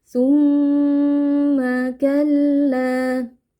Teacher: ada mim tasdid. Jadi kita panjangkan sedikit bunyi dengungnya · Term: mim tasydid